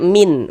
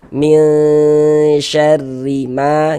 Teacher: Nah, di bagian situnya tuh kita tahan sejenak suara kita. Kita ghunahkan kira-kira sepanjang dua harakat.